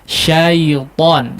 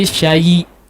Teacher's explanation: Huruf lin itu dibacanya mudah ya, jangan ada iya hidup di situ, cuma nempel saja ya. Syaiton, jangan jadi syayi ya, syayi atau terkesan yi ya.